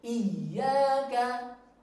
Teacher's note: huruf ya bertasdid tidak dipanjangkan ya, cukup ditekan yang jelas.